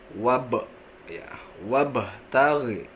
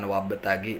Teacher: Yang pertama, pada ayat ini ada hukum bacaan qalqalah ya. Qalqalahnya itu jenisnya qalqalah sugro, di mana kita membacanya itu dipantulkan dengan tipis ya.